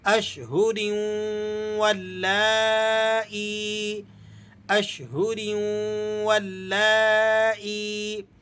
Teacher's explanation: ٹھیک ہے، یہاں پر ادغام ہو رہا ہے، ادغام ہونے کی وجہ سے ہم نے یہاں غنہ کر کے پڑھنا ہے